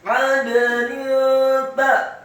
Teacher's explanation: Kata 'adnin, ainnya ditekankan, fathah 1 harokat, kemudian dalnya dibaca sukun dan wajib untuk diqalqalahkan atau dipantulkan. Adnin ta, nun yang harokatnya kasrah tanwin.